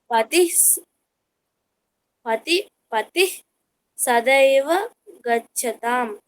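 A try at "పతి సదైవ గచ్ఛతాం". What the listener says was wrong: అక్కడ విసర్గ ఉందా నీకు పతిహి అని ఉందా అక్కడ విసర్గ లేదు పతి సదైవ గచ్చతాం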